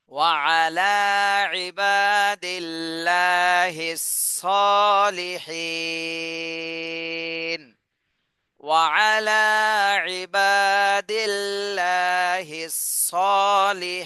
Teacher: আর ওয়াকফের সময় খাড়া জবর, মাদের হরফ, গোলতা বাদে দুই জবর কোনোটাই নেই, এ কারণে জজম দিয়ে পড়তে হবে, সাকিন দিতে হবে। তাহলে সদে এক আলিফ টান দিতে হবে, হি এখানে তিন আলিফ টান দিতে হবে, আর এই নুনে সাকিন দিয়ে পড়তে হবে।